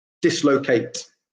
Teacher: the stress there is on the first syllable